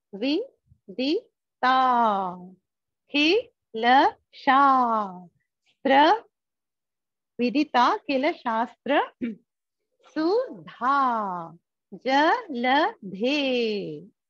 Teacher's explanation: And not only that, there is another special feature of Totakaashtakam, which is two short syllables followed by a long